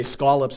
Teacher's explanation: the way that we say scallops is using the rounded lot pronunciation that other parts of the countries don't have